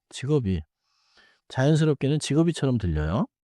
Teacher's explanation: 입을 닫았다가, 비읍 소리를 다음 음절 이로 이어 주세요.